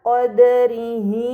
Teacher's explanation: Amma yusrikun pada kata qodrii ini dinamakan Mad sila sugro karena H damir sebelum dan sesudahnya bukan sukun maka harus dibaca panjang selama dua harakat Kemudian pada kata Jamian qobatuhu terdapat harakat fathain yang bertemu dengan